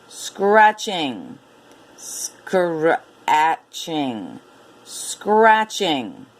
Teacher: you have to be careful of the three consonants in the beginning you have to blend them together